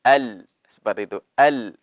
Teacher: lam jangan langsung turun, tapi diparkirkan dulu di langit-langit. Ujung lidah bertemu dengan langit-langit.